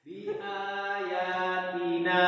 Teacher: Ba-nya nggak panjang, nunnya yang panjang.